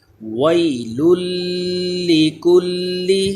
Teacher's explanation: اس کے بعد لام حروف یرملون ہے، ادغام کا قاعدہ لیکن غنہ نہیں کریں گے، لام میں غنہ نہیں کرتے